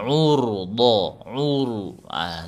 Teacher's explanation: dijaga monyongnya bibir biar tebal sambil dinaikkan pangkal lidahnya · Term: ditebalkan